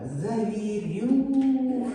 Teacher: у нас і чотири Склади і наголос падає на третій склад